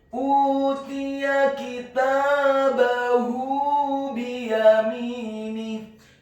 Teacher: huruf ta-nya dibaca tipis kasrah 1 harokat, huruf ya-nya dibaca tipis fathah 1 harokat